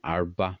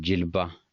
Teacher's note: R is semi-silent, and Jilba, L is semi-silent